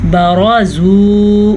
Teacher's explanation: را کو پر پڑھنا ہے اور واو مدہ ہے تو اسے ہم کھینچ کے پڑھیں گے